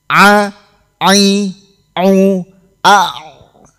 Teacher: makhraj tenggorokan atau tenggorokan bagian tengah tenggorokan menjadi makhrajnya huruf ain